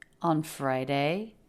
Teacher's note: the pitch goes up at the end. She's asking a yes/no question. And so making the pitch go up shows that she is inquiring.